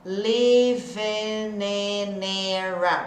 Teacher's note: O som do A é A, o I é E.